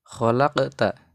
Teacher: hukum bacanya qalqalah karena ada huruf qof yang yang bersukun atau mati.